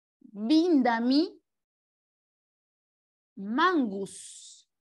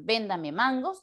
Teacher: donde había vocales abiertas o, ellas han sido cambiadas por las vocales I, U, que son las vocales cerradas. Y en vez de decir, señor, véndame mangos, termina diciendo, señor, víndame mangos.